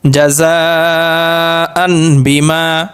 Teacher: তানবিনটাকে মিম দ্বারা পরিবর্তন করিয়া গুন্নাসহ মিলিয়ে পড়তে হবে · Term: ইকলাব